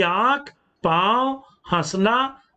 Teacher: आंख, पांव, हंसना आदि का उच्चारण करते समय वायु नाक और मुख दोनों से निकल रही है। तो प्रिय विद्यार्थियों, दोनों का अंतर स्पष्ट है कि अनुस्वार का उच्चारण हम केवल नाक से करते हैं, जबकि अनुनासिक ध्वनियों का उच्चारण हम नाक और मुंह दोनों से करते हैं।